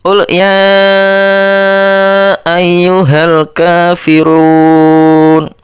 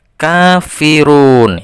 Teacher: K-nya itu dibaca 2 ketukan atau 1 alif. Kemudian run itu dibaca 3 ketukan sampai dengan 5 ketukan. Karena dibaca mad arid.